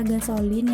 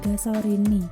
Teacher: penutur bahasa Jepang mengucapkan fonem L menjadi bunyi R, seperti kata gasolin yang dalam bahasa Inggris kemudian menjadi gasorini.